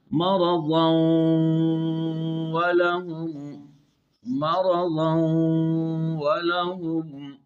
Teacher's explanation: اب یہاں تنوین کا نون واو میں داخل ہو رہا ہے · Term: ادغام صغیر متقاربین